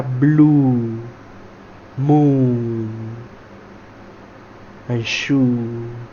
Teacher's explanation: para hacer la tense U, que o sea que es la vocal larga, U, nosotros hacemos como si estuviéramos soplando aire